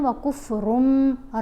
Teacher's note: نون کی آواز کو میم کی آواز کے ساتھ بدل کر پڑھنا ہے۔